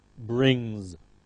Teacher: Remember the ng sound, the nasal n, m, ng are all nasals. They're always followed by voiced z